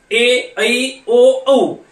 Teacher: संयुक्त स्वर म्हणजे काय तर 2 स्वर एकत्र येऊन तयार झालेल्या स्वराला आपण काय म्हणायचं तर याला संयुक्त स्वर असं म्हणायचं.